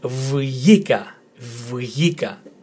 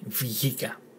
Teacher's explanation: It is a bit difficult if you're not Greek to pronounce it. 'Vyika' with the emphasis again on the letter 'i'.